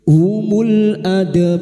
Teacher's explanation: huruf ro yang didahului fathah dan dibaca waqaf maka ro kita baca tafkim